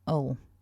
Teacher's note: we have a schwa followed by the dark L, so that's ul.